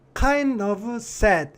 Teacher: kind of라고 들리는 건 n하고 d하고 혀위치가 같아요. 그래서 kind of sad 이렇게 발음 난 거거든요.